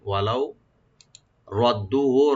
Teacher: রাদ্দুহু, ওয়া ওপেন লাম ওপেন রাখবেন এখানে হারফে লিন, ওয়ালাউ রাদ্দুহু, রাটাকে ডিপ করে পড়বেন, দু একালে টানবেন